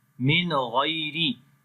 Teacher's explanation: So here we make izhar. After the noon sakin, the next is the throttle letters, which is the ghain. So that's why we make the clear sound of noon here.